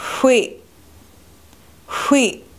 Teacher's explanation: The glottal stop, which looks like a question mark without a dot, or what looks like an apostrophe after a letter, cuts the sound short.